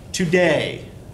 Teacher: You say the second syllable more loudly. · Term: I am